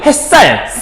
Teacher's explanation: 햇살, 쌀이니까 시옷이 쌍시옷 됐잖아. 된소리 변했지? 두 개 명사 결합이지?